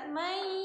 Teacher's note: Masukin ke sini pangkal hidungnya. Masukin ke pangkal hidung karena idgham bil gunahnya tuh adanya di pangkal hidung.